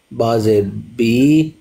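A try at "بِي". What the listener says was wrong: نہیں با کھڑا زیر بی، دو حرکتوں کے برابر ان کو لمبا کیا جاتا ہے، درمیانی رفتار سے انگلی کو بند کرنا یا کھولنا، تو اتنا ان کو لمبا کیا جاتا ہے.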